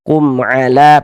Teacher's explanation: Bukan huruf ba, bukan huruf mem, maka berarti hukumnya idhar syafawi. Dibaca jelas bunyi mem sukunnya, kemudian tidak didengungkan, maka baca pendek saja.